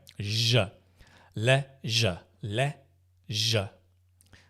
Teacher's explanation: I think in America they say leisure, but in Britain we say leisure, like left, right, left, leisure. And the je is a voiced sound. It's a zh. I do that so you can feel the zh. There's a vibration, right? Zh. Le, zh.